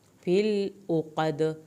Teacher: نفاثات، فا کی کھڑی زبر، سا کی کھڑی زبر کو پورا پڑھیں، تا کی زیر کو ہرگز لمبا نہیں کرنا۔ فِل عقد، فِل پہ لام نہیں ہلنا چاہیے، عین کو حلق سے پڑھیں۔